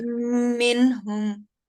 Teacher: جی یہاں پر منہم میں کیونکہ نون ساکنہ ہے جی جی اور اس کے بعد ہا آ رہا ہے تو یہاں پر ہم اظہار کریں گے